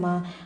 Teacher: میم دونوں ہونٹوں کے سوکھے حصے سے ادا ہوتا ہے۔ میم کو باریک پڑھیں گے۔